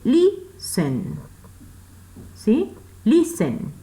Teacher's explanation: la sílaba acentuada está al inicio y no al final